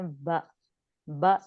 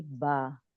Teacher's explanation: اگر الف اگر ساتھ لگ جائے گا تو اسے پڑھیں گی با, یعنی ب ساؤنڈ 1 کاؤنٹ ہے, با 2 کاؤنٹس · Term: مد